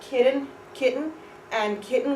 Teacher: we don't really pronounce the T we pronounce the N